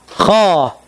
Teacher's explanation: Kha itu hanya terangkat lidahnya, tidak menempel. Kha, seperti itu isti'la.